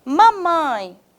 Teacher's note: a última sílaba aqui é mais tônica ela é mais forte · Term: oxítona